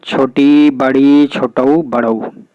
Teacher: वे स्वर जिनके उच्चारण में मुख ना के बराबर खुलता है अर्थात लगभग बंद रहता है, उन्हें समृद्ध स्वर कहते हैं।